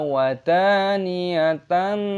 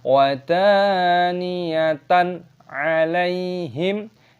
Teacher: 'fathah tanwin' bertemu 'ain', aturannya adalah 'izhar halqi', dibaca dengan jelas, jangan dibaca dengan bunyi sengau